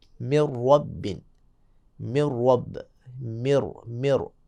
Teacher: نون کو را میں تبدیل کر دیں گے اور ادغام کریں گے. من رب، من رب، مر، مر یعنی من رب نہیں پڑھیں گے بلکہ من ربہم، من ربہم. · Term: ادغام بلا غنہ